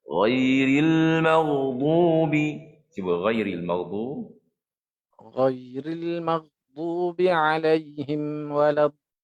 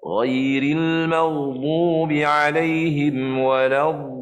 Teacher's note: Ghairil maghdubi alaihim sama juga jangan sampai terputus suara masih ada kerana dhad huruf rakhawah.